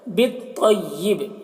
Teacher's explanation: با کو تو سے ملا کر تو کو پر پڑھیں گے.